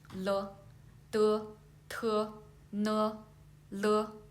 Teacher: the tip of your tongue should touch the back of your upper teeth and then move the tongue down